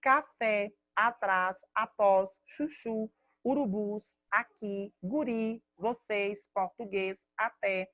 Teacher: todas as palavras do quadro, elas são oxítonas, ou seja, a última sílaba tônica